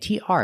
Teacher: tr makes the chch sound like chicken plus the r together